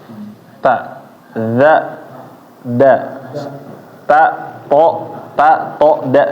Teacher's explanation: makhrajnya ta th da sama-sama dari tempat tumbuhnya gigi